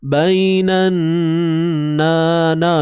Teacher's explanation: nun bersabdu kena dengung kadarnya 2 harakat